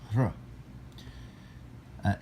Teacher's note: It's a hr sound. And almost like an R, but you breathe through it